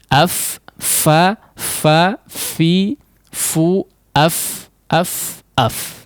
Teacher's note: Hembuskan udaranya ya. Karena kedua titik makhraj ya atau kedua sisi makhraj bersandar tidak terlalu kuat ya. Tidak terlalu kuat. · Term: huruf fa